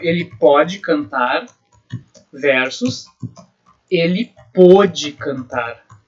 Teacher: ambas as formas verbais, pode e pôde, são paroxítonas, que tem a penúltima sílaba tônica